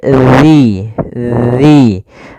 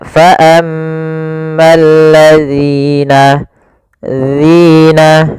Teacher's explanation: Agar sempurna dari makhraj dan sifatnya adalah ujung lidah kita tempelkan dengan gigi seri atas, agak kita keluarkan sedikit sehingga berbunyi zi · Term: huruf zal